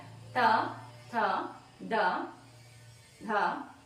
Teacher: ನಾಲಿಗೆಯ ತುದಿ ನಿಮ್ಮ ಹಲ್ಲಿನ ಹಿಂಭಾಗಕ್ಕೆ ಮೇಲ್ದಂತದ ಪಂಕ್ತಿಯ ಹಿಂಭಾಗಕ್ಕೆ ತೆಗೆಯುತ್ತೆ ಹಾಗಾಗಿ ಇವುಗಳನ್ನ ದಂತ್ಯ ಅಂತ ಕರೀತೀವಿ